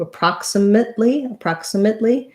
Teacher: Approximately has second syllable stress. So my stress is on the prox syllable. This first letter A, as is the case in many unstressed first syllables with letter A, is the schwa sound.